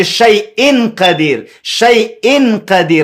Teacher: زه ډېر واضح اظهار نه کوم یعنی ډېر واضح نون نه وایم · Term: اخفا